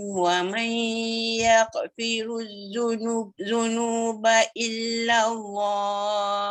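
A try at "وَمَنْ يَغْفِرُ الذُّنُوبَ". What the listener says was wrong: Wa man yaghfiru, jangan sampai bunyi ya kok. Bunyi kuat sangat ya kok. Kok tu tak mau.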